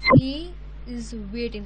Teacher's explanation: That means ਵੇਟ ਉੱਪਰ ਆਪਾਂ ਜ਼ਿਆਦਾ ਸਟ੍ਰੈਸ ਪਾਇਆ ਹੈ। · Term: ਟੋਨਿਕ ਸਟ੍ਰੈਸ